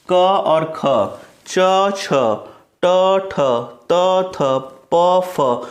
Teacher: अघोष स्वर तंत्रियों में कंपन नहीं होती है, इनके उच्चारण में स्वर तंत्रियों में कंपन नहीं होती है